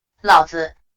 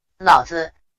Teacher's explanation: The only way to distinguish the two will be to use the neutral tone for father. The latter will take the third tone to stress the significance of the philosopher's name.